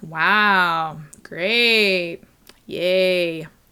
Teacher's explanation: saying exciting words with a flat affect like wow great yay that would be sarcasm